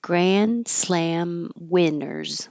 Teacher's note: You're not going to pronounce the D grand, so your tongue just holds it there, which is the same position as the N, so it's going to sound like grand.